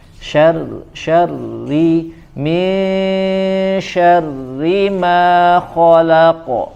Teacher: Min syarri, syarri ya tidak boleh jelas ya, dan tidak boleh, hati-hati tidak boleh berlebihan getarannya, hanya getaran yang lembut saja ya, dan di sini dibaca tipis ya karena dia berharokat kasroh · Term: ro bertasydid